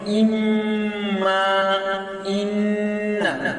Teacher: আল খাইশুম, নাক। মানে নাকের গুন্না, যেমন ইম্মা, ইন্না।